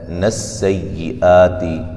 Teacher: سین کو باریک سیٹی سے ادا کریں گے